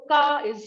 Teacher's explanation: the word ka with a high level tone is go